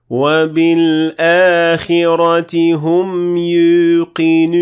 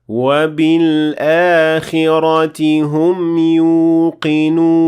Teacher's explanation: you will be mixing the sound of the waw with a hint of the yeah sound. So you will kind of be pronouncing both at the same time.